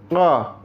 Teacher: Qaf jangan disamakan dengan kaf. Ini ada di makhraj pangkal lidah. Qa. Padanan Indonesianya qiu dan o.